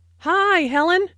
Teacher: Notice that the I sound in hi is extended to show that is very pleased to see Helen.